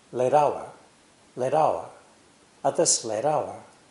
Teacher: Another linking is late with hour, with the American flap T sound.